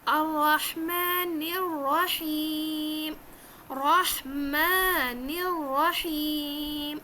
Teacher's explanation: ایک تو را کو موٹا کرنا ہے، را کو 2 بار پڑھنا ہے کیونکہ تشدید ہے. دوسرا ہا کو حلق سے نکال کے پڑھنا ہے